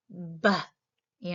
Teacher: So there's a complete blockage and then a sudden release of air. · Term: stops